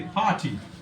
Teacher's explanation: Put stress on par par will be stressed. This will go higher, this will go lower. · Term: syllable stress